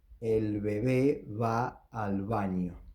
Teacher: So all the B's in this word and in this sentence are pronounced like the approximant. · when the B is preceded by a vowel, is pronounced like the approximant